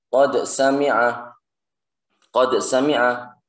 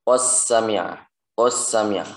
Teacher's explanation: kalau menurut imam kita Hafiz An Asim ini tidak dibaca idgham, melainkan dibaca jelas.